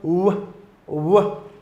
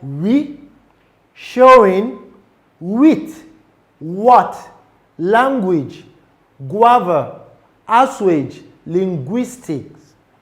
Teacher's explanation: The bilabial approximant is found in the sound w, w, and it is a semi-vowel produced by bringing the lips closely together but not completely obstructing airflow, creating a gliding or transitional sound